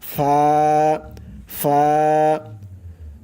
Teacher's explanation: নিচের ঠোঁটের পেট সামনের উপরের দুই দাঁতের আগার সঙ্গে লাগাইয়া উচ্চারণ হয়